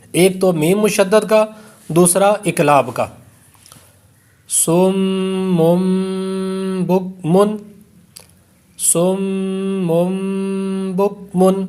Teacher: اب اس پر دو غنے ہوئے، ایک تو میم مشدد کا دوسرا اقلاب کا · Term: غنہ